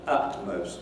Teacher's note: a glottal stop so that you have glottalization taking place at the same time